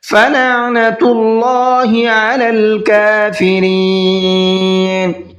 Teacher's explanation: اللہ کے لام کو منہ بھر کے پڑھنا ہے، اس لیے کہ اللہ کے لام سے پہلے پیش ہے